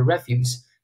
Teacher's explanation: 但它动音那个动词的话，重音在第二音节， 这个重音在第一音节，就是▁refuse，也是表示垃圾